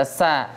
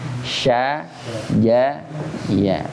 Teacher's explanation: antum baca sa udah maju ke depan dia. Ujung lidah. Sa itu ujung lidah.